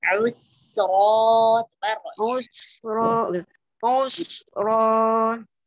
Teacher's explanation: Al-dhamma sempurna, tarik bibirnya, alir panjang.